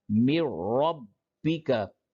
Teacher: تو اب یہاں پہ میم نون کو را میں ادغام کر دیا، 2 را ہو گیا. اب یہاں پہ نون نہیں پڑھا جائے گا، من ربی کا نہیں بلکہ مر ربی کا، اسی کو ادغام کہتے ہیں